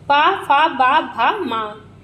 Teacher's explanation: प, फ, ब, भ, म का उच्चारण स्थान ओष्ठ से होता है।